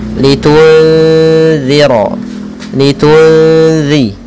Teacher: makhraj huruf zal yaitu ujung lidah menempel dengan gigi sari yang atas · Maka cara membacanya kita samarkan kepada huruf zal. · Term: ikhfa hakiki